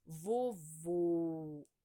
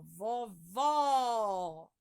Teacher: O acento circunflexo deixa o som fechado da vogal